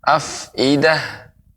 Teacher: afidah lebih banyak aliran udara keluar ketika disukunkan